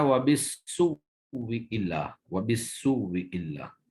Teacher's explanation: پہلا حمزہ جو ہے اس کا واو سے پہلے ابدال کیا ہے اور پھر واو کا واو میں ادغام کر دیا ہے